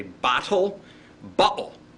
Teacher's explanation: now did you hear that glottal stop